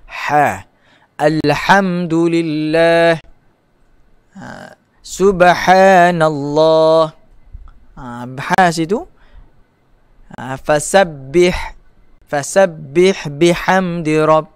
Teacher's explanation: ha maftuhah, ha yang terbuka itu mesti apabila kita menyebut huruf tersebut, kita bunyi seakan-akan bunyi kita pedas